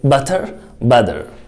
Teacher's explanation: صوت التاء لما يبقى between two vowels، لما يبقى بين حرفين متحركين بننطقه ده ده ده، يعني دي خفيفة جدا وسريعة جدا